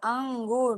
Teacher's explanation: لکھا ہوا ہے لیکن ہم پڑھیں گے اس کو کیا، انگور، نون گننا کی آواز آ رہی نا تو ناک میں ڈالیں گے، آواز چھپائیں گے